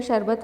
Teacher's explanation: श शरबत वाला वह तालव्य कहलाता है क्योंकि इसका उच्चारण तालू से होता है